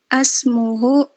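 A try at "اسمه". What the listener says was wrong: Ismuhu, jangan asmuhu, ismun.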